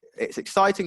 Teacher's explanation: Your voice goes a bit higher.